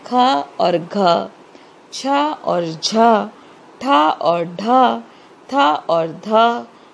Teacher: ऐसे व्यंजन जिनको बोलने में अधिक प्रयत्न करना पड़ता है, जोर लगाना पड़ता है और बोलते समय मुख से अधिक वायु निकलती है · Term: महाप्राण व्यंजन